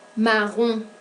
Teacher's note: avec la voyelle nasale on